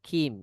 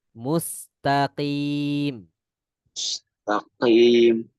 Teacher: Itu seperti huruf kaf bunyinya. Huruf qaf masukkan pangkal lidahnya itu ke dalam lagi, ya. Di belakang huruf kaf.